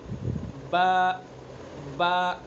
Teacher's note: با کا مخرج دونوں ہونٹوں کی تری کا حصہ، دونوں ہونٹوں کی تری کے حصے سے با نکلتا ہے